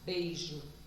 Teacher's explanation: vogal e aí eu tenho como exemplo exemplo a palavra beijo vogal primeiro depois semivogal mas ainda assim permanecem na mesma sílaba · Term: ditongo decrescente